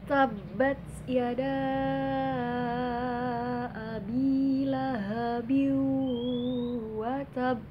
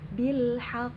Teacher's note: Pantulannya namanya juga kubro, jadi pantulannya besar, ditahannya itu lama. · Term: qalqalah kubro